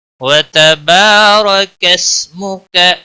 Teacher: را کے اوپر زبر ہے اس لیے اس کو پر پڑھیں گے، موٹا پڑھیں گے۔ کسمک، سین کو ہلانا نہیں، باقی کسی بھی حرکت والے حرف کو کھینچنا نہیں۔